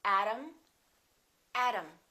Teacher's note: a is reduced therefore they are the same sound and remember t between two vowels sounds exactly like the d